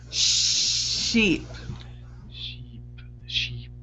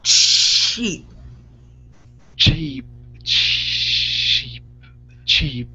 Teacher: So it's the amount of air that you're pushing out. The SH is soft and it's not a lot of force. The CH is very strong and you're pushing more air out of your mouth.